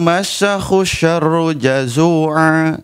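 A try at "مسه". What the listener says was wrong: Coba dilihat huruf-hurufnya, mana sin, mana shin.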